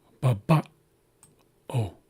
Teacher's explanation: And you hear that little pause caused by the apostrophe. · And then this O comes back down again at a lower tone. And this this apostrophe is a glottal stop. So again, we're closing our glottis. So there will be a slight pause after the second A and before the U sound. And the apostrophe also causes a change in the sound of the U.